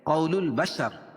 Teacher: الف لام کے بعد حروف قمری کے 14 حرفوں میں سے با ہے تو یہاں لام پڑھی جائے گی · رائے ساکنہ سے پہلے زبر یا پیش ہو تو را کو پر پڑھیں گے، اور یہاں زبر ہے تو را کو پر پڑھی جائے گی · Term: حروف قمریہ